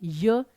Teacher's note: उसी प्रकार उच्चारण स्थान, जो य है, य बोलकर देखिए, य जो जीभ है वो ऊपर वाले भाग को थोड़ा सीधा रहकर टच करती है, तो इसका उच्चारण स्थान है तालव्य